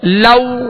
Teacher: لو ہونٹوں کو گول کریں گے، لو یعنی معروف طریقے سے ادا کریں گے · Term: واولین